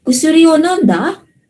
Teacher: it should be in the rising intonation to emphasize na question siya